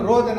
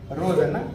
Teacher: ರೋಧನ ಅಂದ್ರೆ ಮಹಾಪ್ರಾಣ ಖಂಡಿತ ಬರಲ್ಲ ರೋದನ ಎರಡನೇ ಪದ ಸರಿಯಾಗಿದೆ